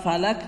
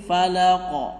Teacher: falaq bukan falak tapi falaq, qalqalah di situ